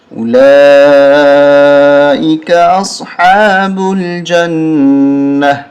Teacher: وقف کی صورت میں ہا بن جاتی ہے · با لام پیش بل، جیم نون زبر جن، نون زبر نا، غنہ کریں، نون مشدد پہ غنہ ہوتا ہے